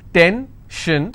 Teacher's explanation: Tension, I will stress on ten. If I have pension, I will stress on pen.